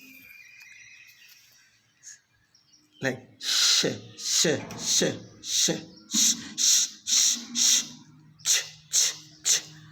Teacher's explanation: So when your tongue is actually, your blade of tongue is moving towards palate, so you feel that this is a palatal sound, like sh, sh, sh, sh, sh, sh, sh, sh, ch, ch, ch.